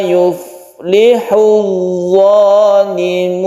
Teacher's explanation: ada tasydid dha yang merupakan idgham syamsiyah. Kita tekan langsung ke dha-nya ya